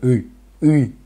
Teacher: peu près le dur quand on fait oui oui oui oui il y a une espèce de oui sauf que c'est derrière au fond de la gorge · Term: i dur